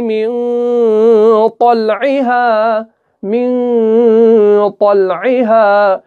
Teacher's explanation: اس نون کو ہم نے ظاہر نہیں کیا بلکہ ہم نے اس کو چھپایا، ہم نے اخفا کیا